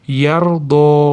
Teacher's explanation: Yardo ro tafhim yo'g'on aytamiz. Doddan keyin alif madd bor mana yardo cho'zib to'xtaymiz.